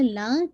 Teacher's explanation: لام پہ شد ہے تو آپ اس کو ٹوائس ادا کیجیے گا